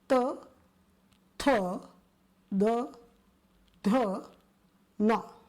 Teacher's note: They start from the teeth or the roof of the teeth, and so they are called dantya or dentals.